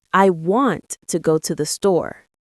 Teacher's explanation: Want, go, store. They're the strong beats. To, the. Those are lighter, faster.